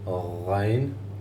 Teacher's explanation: This is in the throat, top of the throat